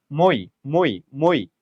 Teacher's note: দুইটা স্বর পাশাপাশি যুক্ত হয়েছে এবং একসাথে উচ্চারণ হচ্ছে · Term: যৌগিক স্বর